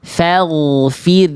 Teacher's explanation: Fa-nya tipis, gha-nya tebal.